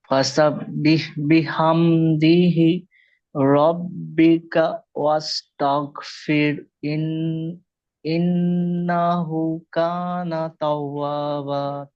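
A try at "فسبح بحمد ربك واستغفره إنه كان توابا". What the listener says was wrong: জি, মাশাআল্লাহ, দেখেন ফাসাব্বিহ বিহামদিহি বলেছেন আপনি। এখানে দি হা নেই কিন্তু। ফাসাব্বিহ বিহামদি, ফাসাব্বিহ বিহামদি রাব্বিকা ওয়াস্তাগফির। এখানে হা উচ্চারণ করতে হবে, ছোট হা, হ।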